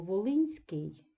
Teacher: теми повторювали якраз асиміляці у групах приголосний і це асиміляція тобто н асимілюється під впливом с наступного нам чується м'якість